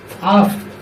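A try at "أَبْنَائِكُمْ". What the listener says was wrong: তাহলে তুমি এটা আফ কেন বলতেছো আবার আফ বলে আব তোমার প্রথম পড়াটা শুরুটাই সুন্দর হচ্ছে না আলিফের উপরে যাব তারপরে বার করে থাকেন আব আব আফ হয়ে যাচ্ছে কেন বুঝতেছে না তুমি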